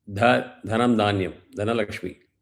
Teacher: there should be a gush of air that comes from your nabhi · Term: mahaprana